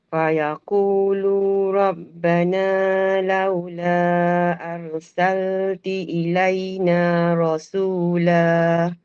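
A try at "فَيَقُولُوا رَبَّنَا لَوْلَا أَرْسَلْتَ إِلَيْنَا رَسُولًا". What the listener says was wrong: Arsalta bukan arsalti. Arsalta ilaina. Okey ulang balik.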